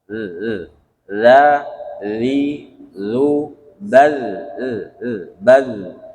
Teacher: huruf dza dia memang ada getar tapi tidak ada angin